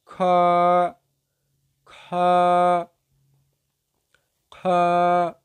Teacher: কণ্ঠনালীর উপরিভাগ থেকে উচ্চারিত হইবে